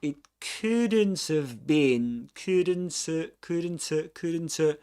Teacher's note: So what he does is to drop the H.